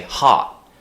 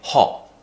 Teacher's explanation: This very round shape with the mouth where we lift the tongue in the mouth, it creates such a British sound